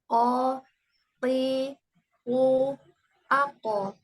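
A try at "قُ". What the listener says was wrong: Iya, kuatkan lagi ketika dia dhammah. Jangan ku, o, ti, ku, ako.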